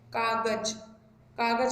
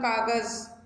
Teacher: और जब आप बोलते हैं कागज, कागज बोले तो ज की आवाज़ आ रही है, लेकिन अब हमने से बिंदी लगाई, हमने से बोला कागज, तो जेड की साउंड में जा रहा है, तो ये नुक्ता कहलाता है।